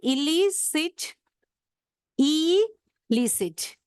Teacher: So in illicit, we have to give a stress on the second syllable.